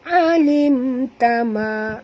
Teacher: Qa tebal, la qad huruf qaf tebal, dal sini lantunkan dia qalqalah sughra ya. Alim tama, mim mati bertemu ta, tak boleh dengung, izhar syafawi ya